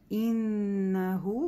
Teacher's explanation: И, четко и, говорим, да, про это уже в начале первого аята было сказано. Иннаху, когда нун мушаддада, читаем ее дольше, чем просто иннаху, да, потому что здесь гунна самая большая